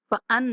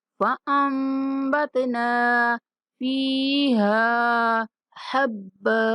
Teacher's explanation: فأنبتنا فيها حبا، یہاں نون ساکن کے بعد بار ہے تو ہم نے نون کو میم سے بدل کر پڑھنا ہے ، فأن نہیں پڑھیں گے، فأم پڑھیں گے، فأنبتنا فيها حبا،